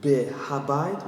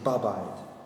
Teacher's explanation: the he is dropped and the preposition has patach vowel, becomes a, like instead of bebait in a house becomes ba-bait in the house.